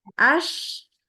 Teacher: Tengah lidahnya tu naik mendekati langit-langit sehingga pas kita membaca as ini ada aliran angin yang menyebar ke seluruh ee area mulut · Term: huruf syin